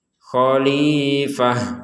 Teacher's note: Nah, kemudian ada fathatain. Maka kita berhentinya membacanya itu dengan huruf ha. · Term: ta marbutah